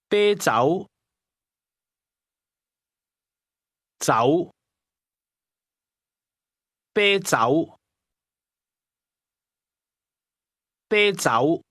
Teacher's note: This is pronounced with a high level tone followed by a mid- rising tone.